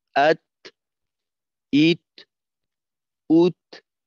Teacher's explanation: বাতাস ছাড়তে হবে মাখরাজ থেকে পৃথক হওয়ার সময়